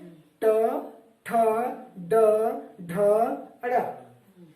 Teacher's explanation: हम जब ट, ठ का उच्चारण करते हैं, यहाँ जीभ कहाँ स्पर्श करती है? ये मूर्धा में करती है। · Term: ट वर्ग